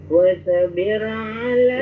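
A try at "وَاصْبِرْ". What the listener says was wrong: Wasbir, sod jangan dipantulkan, jangan wasbir tapi wasbir ala.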